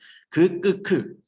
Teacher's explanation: 얘네들은 혀가 좀 더 위로 휘고 입 부드러운 입천장 소리지.